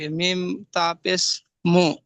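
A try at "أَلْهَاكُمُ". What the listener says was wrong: হ্যাঁ মিম তা পেশ মুত যখন একসঙ্গে রিডিং পড়ছেন তখন আল হা মুত বলছেন, তো কাফটা ছেড়ে গেল না।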